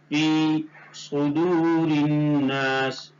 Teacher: یا مدہ کو ایک الف کے برابر کھینچ کر پڑھیں گے